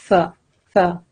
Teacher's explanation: The tip of your tongue touch the end of your upper teeth.